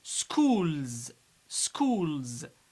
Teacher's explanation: We pronounce S Z because it's preceded by L.